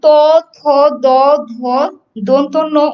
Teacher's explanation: এছাড়াও তুমি যদি ত, থ, দ, ধ দন্তন্য উচ্চারণ করো, তখন দেখবে যে তোমার জিহ্বার সাথে দাঁতের স্পর্শ লাগছে। ত, থ, দ, ধ দন্তন্য উচ্চারণ করার সময় দেখবে জিহ্বার সাথে সামনের যে দুটো দাঁত, সেই দাঁতের সাথে স্পর্শ হচ্ছে, তাই এগুলো স্পর্শ বর্ণ।